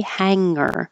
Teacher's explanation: you can say hang with the back of the tongue touching the top of the mouth and sliding back and you won't hear a hard G hanger if you do come down G you'll hear that hard